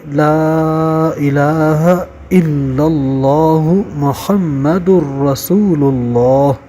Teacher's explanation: یاد رکھیے گا کہ لا الہ میں جو پہلا لام ہے اس کے اوپر مد ہے، تو اس کو 3 الف کے برابر کھینچیے، اور الہ میں جو دوسرا لام ہے اس کے اندر کھڑا زبر ہے، اس کو 1 الف کے برابر کھینچیے، اور الا اللہ میں جو لام ہے اس پر تشدید ہے، اس کو جھٹکا دے کر زور سے پڑھنا ضروری ہے